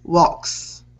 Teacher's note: it ends with that K sound, and then you have your S, so it's that voiceless S